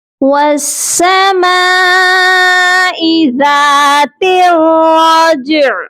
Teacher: جیم پر قلقلہ کرنا ہے اور عین کی مخرج کو آپ نے صرف ٹچ کرنا ہے